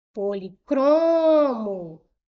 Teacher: O cro aqui foi a sílaba mais forte. Então a última penúltima, ela é uma palavra paroxítona.